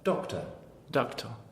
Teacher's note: It's the second syllable here of doctor. It's called a schwa. It's a light half syllable.